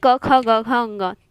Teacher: प्रत्येक व्यंजन के उच्चारण में अ की ध्वनि छिपी रहती है